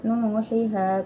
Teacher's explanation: Mad thaobi'i panjangnya dua harakat atau satu Alif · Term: Mad Thobi'i